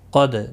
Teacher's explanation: الا، لا الف مدہ ہے، ما الف مدہ ہے، دونوں کو ایک ایک الف کی مقدار کے برابر کھینچ کر پڑھیں گے. قد، دال ساکن پر قلقلہ ہوگا